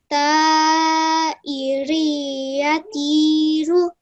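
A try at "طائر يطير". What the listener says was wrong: Just try and produce that nasal sound a bit more.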